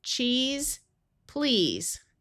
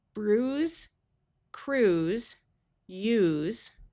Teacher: The other sound that se can have at the end of a word is the voiced sound of z. These words will use the long e sound.